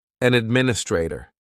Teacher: An administrator. The schwa just takes over.